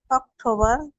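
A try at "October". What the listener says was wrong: অক্টোবর হবে না, এই যে রটা উচ্চারণ হবে না, বার হবে না, এই যে ধরেন বার উচ্চারণ করছেন, এটা কিন্তু হবে না। এখানে হবে কি সেপ্টেম্বর, অক্টোবর, বারটা উচ্চারণ করবেন। রটা মনে করেন নাই, ধরেন আমরা রটা কেটেই দিলাম, বুঝতে পারছেন?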